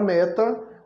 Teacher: A palavra meta, a sílaba mais forte é a primeira sílaba.